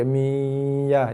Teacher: Masuk dalam ya tapi tak perlu tekan. Jangan ditekan. Lembut aja. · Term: Idgham ma'al gunnah naqis